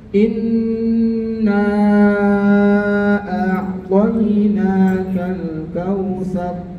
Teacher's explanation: 4 atau 5 harokat ya. Ditahan, dengungnya ditahan, kemudian dipanjangin 4 atau 5 harokat. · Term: mad jaiz munfasil